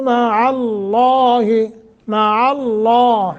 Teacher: لفظ اللہ کو موٹا کرنا ہے، ما قبل فتح ہے